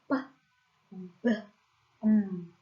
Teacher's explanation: Nah, ini ada top, ada top lip, ada bottom lip, ada p. Nah, ini ada bilabial namanya p, b, yaitu ada top and bottom lip